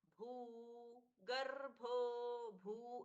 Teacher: भो महाप्राण है। बीच का ग है वो अल्पप्राण है।